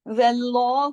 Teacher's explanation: واو کو موٹا نہیں کیا، ہا کو موٹا نہیں کیا، لفظ اللہ کے لام کو موٹا کیا. واللہ، واو اور ہا باریک لیٹر ہے، صرف لام چونکہ کنڈیشنل ہے، واو پر زبر ہونے کی وجہ سے ہم نے لام کو موٹا کیا.